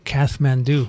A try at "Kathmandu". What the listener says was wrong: You don't pronounce the H.